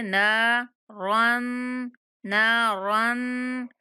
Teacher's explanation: रा पे गुन्ना करेंगे और नून को 1 अलिफ के बराबर खींच के पढ़ेंगे।